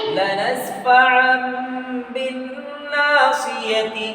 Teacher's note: نون ساکنیہ تنوین کے بعد با آئے تو نون ساکنیہ تنوین کو میم سے بدل کر غنہ اور اخفا کے ساتھ پڑھیں گے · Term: اقلاب